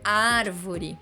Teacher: árvore é uma palavra de três sílabas contando de trás para frente ar é a sílaba mais forte